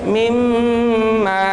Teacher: Di sana ada gunnah mim yang ditasydid. Mimma, ma naik alif, 1 alif panjangnya.